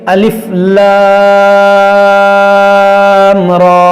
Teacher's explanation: را کو موٹا کریں گے، کھڑا زبر ہے